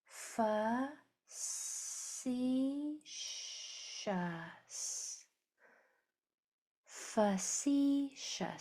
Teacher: And the second syllable is accented.